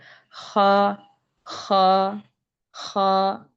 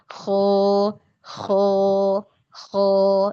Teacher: setelah pangkal lidah naik ya proses isti'la terjadi nanti fathahnya dibuka saja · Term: invitah